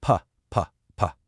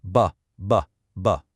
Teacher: You feel that little buzz, that gentle vibration in your vocal cords. That's the sound we're going for. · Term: voiced